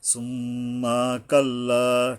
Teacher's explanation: কাল্লার উপরে একালিপ টানতে হবে